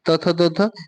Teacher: त थ द ध ये तो आपका दंत हो जाते हैं